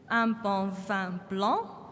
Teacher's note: we've got all different vowels making the same nasal sound.